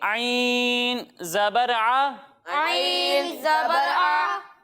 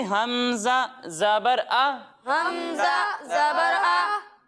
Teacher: जब हम आइन की अदायगी करेंगे तो इसे हम हलक के दरमियाने हिस्से से पढ़ेंगे, और जब हम हमज़ा की अदायगी करेंगे तो इसे हम हलक के निचले हिस्से से पढ़ेंगे